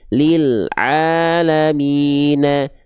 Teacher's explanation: nggak boleh putus huruf lam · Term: lam sukun